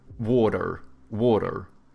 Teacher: Americans, they have like soft T's and then they pronounce their R's, so they go like water, water, you know?